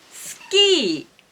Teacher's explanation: Please notice that ki is high, e is low.